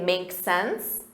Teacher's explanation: you can simply shorten that and say make sense with a rising intonation